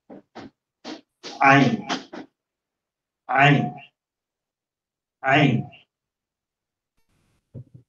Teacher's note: Ito naman, wala siyang katumbas sa English. Dito siya nagagaling sa gitna ng throat.